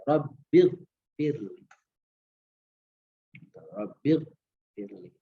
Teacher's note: Kata Robbinya itu nggak dibaca panjang ya